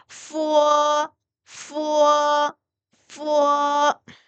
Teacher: 윗 어금니 두 개를 아랫입술 살짝 스치면서 우어로 끝나면 돼요